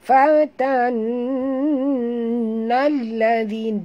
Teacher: dengung pada nun yang bertasydid, wajib dengung ya. Nal alif lam syamsiah ya, jut pada lam, di atas lam ada tasydid, zi sentil lidah maktabi'i dua harakat.